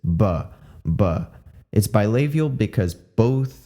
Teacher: It's bilabial because both of your lips are touching. And it's a plosive because of that action, the p, up. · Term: voiced bilabial plosive